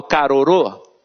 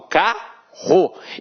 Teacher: esses dois rs aqui possuem um som de um R forte